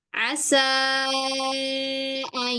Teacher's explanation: nun bertemu ya, nunnya sukun ya, sifat nunnya itu masih ada. Sifat ghunahnya itu masih ada. Jadi bukan ayat tapi ayung ayak ada sengaunya. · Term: sifat gunnahnya